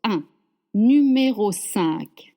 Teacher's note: It means 5, and you have this un sound that we talked about before. The un is a closed sound. Your lips are stretched and your mouth is closed.